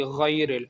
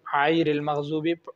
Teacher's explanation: غین کا مخرج کیا ہے؟ ادنا حلق، ادنا حلق سے اس کو ادا کیا جائے تو پھر اس کی ادائیگی درست ہوگی غیر اور اگر ہم غین کو ادنا حلق سے نہیں ادا کریں گے، وسط حلق سے ادا کریں گے، پھر یہ عیر المغضوبی ہو جائے گا جو کہ غلط ہے۔